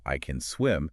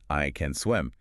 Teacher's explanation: The vowel, the A, just vanishes. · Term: ghost word